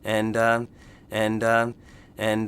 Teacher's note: thought word that we say when we're thinking and and again the intonation of the voice is going up at the end and signaling comma not a period more information coming · we have the intonation of the voice going down at the end, so we know period, end of the sentence, end of the thought.